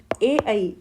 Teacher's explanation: ए आई का उच्चारण स्थान है कंठ तालु। कंठ प्लस तालु।